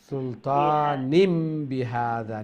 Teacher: তনউইনের পরে বা ইলে এই তনউইন রে মিম দিয়া চেঞ্জ করি পড়িতা কলব বদলাইয়া পড়িতা